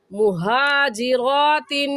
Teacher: ये हा हलक का आखिर जो सीने की तरफ है वहाँ से निकलता है, तो निकाल कर पढ़ेंगे वाज़ेह करके। मुहाजिरातिन, तिन पर गुन्ना करेंगे क्योंकि तनवीन के बाद हरूफ हल्की जो कि 6 हैं, हमज़ा हा, आइन हा, गैन खा, उनमें से कोई लफ्ज़ नहीं आया, इस वजह से इस तनवीन पर हम गुन्ना करेंगे।